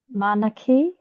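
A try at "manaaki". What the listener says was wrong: Oh, very close, very close. Manaki. So there's that double So if there's a double vowel or a tohu toa, it means make the sound longer. So manaki. Otherwise, perfect.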